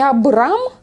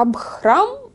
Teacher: Абрамча, оно вот не Абрам, а Абхрам, и не Ха чистое, а оно там с придыханием просто. Аб с придыханием. · То есть там это Ха, оно ползвука, оно просто придыхание. То есть это не четкое ха.